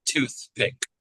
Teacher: all you have to do is bring the lips together after the TH